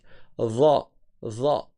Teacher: Le dha, la langue, elle sort et elle tape sur les dents du haut. Dha, comme le zel, sauf qu'il il est emphatique.